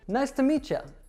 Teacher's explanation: So when we have a t plus a y sound it morphs into a CH sound.